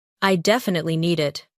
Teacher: Native speakers often stress the word definitely.